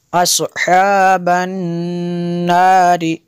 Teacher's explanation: نون مشدد ہے، یہاں پہ غنہ کریں گے۔